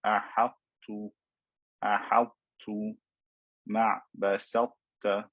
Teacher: I'm merging the ta into the letter ta, but not completely. I'm keeping the sifa of itbaq here. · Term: partial merging